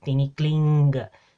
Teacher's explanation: in the Philippine languages, it has that velar nasal sound, the ng